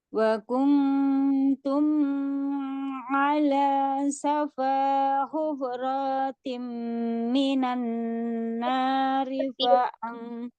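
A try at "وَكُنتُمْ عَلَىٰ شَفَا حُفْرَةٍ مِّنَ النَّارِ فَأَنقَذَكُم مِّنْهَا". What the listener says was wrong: Ulangi, hufratim, rohnya pendek. Eh, yang izhar safawinya itu tidak ditahan, hanya dialirkan mimnya. Jadi jangan juga ditahan wa kuntum ala, enggak. Wa kuntum ala, cuman diselesaikan aja, dialirkan. Yang ditahan itu ikhfa-nya. Wa kuntum ala.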